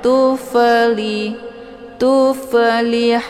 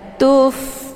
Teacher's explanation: Jadi dibacanya secara dialirkan dan ada desis anginnya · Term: Hamas